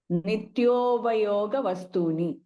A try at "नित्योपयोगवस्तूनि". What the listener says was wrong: This is another problem with generally, I mean, I see with the Tamil speaking people. This is pa, not ba. This is pa. Pa, pa, ba, ba. Not nityobha. Nityopa. This is pa. Pay attention to the pronunciation of the letter. pakara, not bakara. Generally, we do it.